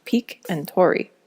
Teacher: In consonant clusters that start with S, such as speak and story, the S drops off and they are pronounced peak and tori.